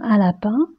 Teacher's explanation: La bouche est ouverte, les lèvres tirées, la langue en avant, la pointe de la langue touche les dents du bas et l'air passe par la bouche et par le nez. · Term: son nasal